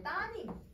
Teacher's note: 따님 이렇게 리을이 탈락이 돼버려요